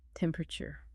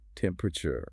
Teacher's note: It's written as four syllables, but it's frequently reduced to three.